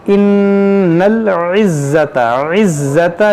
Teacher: نون مشدد ہے، اس میں غنہ کریں گے